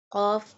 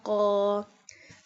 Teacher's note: Qaf pronounced from the root of the tongue touching the soft part of the palate.